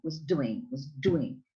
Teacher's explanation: so you put the emphasis on the main verb doing